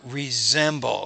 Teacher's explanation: when the S is in between two vowel sounds, it's more of a Z